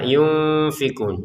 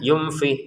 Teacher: Nun sukun bertemu fa kita baca dengan samar